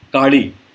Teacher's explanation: र भी नहीं है, लॉ भी नहीं, उसके बीच का एक अक्षर